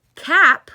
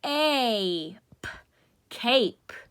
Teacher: now we went from short with the AH to the long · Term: long vowel